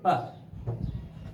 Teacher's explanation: In release phase, what we do is we release the airflow at once. Suddenly when we release the airflow, it is the burst out of air.